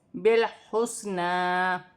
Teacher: نون پر کھڑی زبر ہے، اسے بھی ایک الف کی مقدار کھینچ کر پڑھا جائے گا